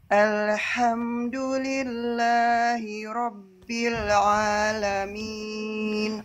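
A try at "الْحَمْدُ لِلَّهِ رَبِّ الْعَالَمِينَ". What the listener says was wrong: Oke, bil a jangan sampai mantul, lam sukunnya sedikit. Alhamdulillahi rabbil alamin.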